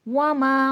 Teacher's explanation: वाव हरफे शफवी है। होठों से अदा होगा। मा में अलिफ मद्दा है। · واو حرف شفوی ہے، ہونٹوں سے ادا ہوگا، ماں میں الف مدہ ہے، الف سے پہلے زبر ہے، کھینچ کے پڑھا جائے گا۔